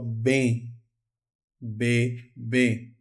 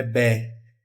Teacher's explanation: O E é fechado. Não é bé, é bem. Então eu indico que é fechado com acento circunflexo.